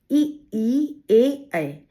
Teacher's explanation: अब बच्चों ये आपको ऐसे मेरे बोलने से नहीं समझ में आ रहा होगा, आप स्वयं उच्चारण करके देखिए कि जब आप ये स्वर बोलते हैं तो आपकी जीभ का आगे वाला भाग एक्टिव रहता है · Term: अग्रस्वर